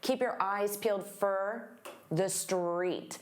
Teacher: And for also becomes very unstressed